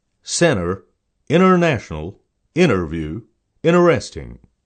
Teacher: T is silent when it is preceded by an N in the spelling.